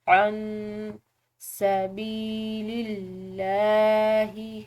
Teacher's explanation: لفظ اللہ کی لام باریک پڑھیں گے کیونکہ پیچھے والے حرف یعنی کہ لام کی زیر ہے